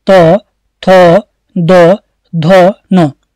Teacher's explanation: त वर्ग को हम कहते हैं दंत्य वर्ग। तो इसमें क्या होता है, जो हमारी जीभ होती है वो दांतों को जरूर टच करेगी